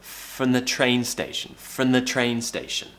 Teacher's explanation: When we're pronouncing the TH sound really fast, sometimes we can just quickly tap the back of the teeth.